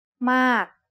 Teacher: a falling tone begins with a relatively high pitch that drops sharply